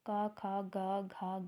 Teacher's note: तो जो क वर्ग का उच्चारण स्थान है वो है कंठ तो क वर्ग का उच्चारण स्थान कंठ से होता है